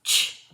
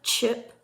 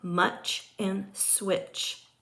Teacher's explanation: The ch sound is an unvoiced palatal affricate.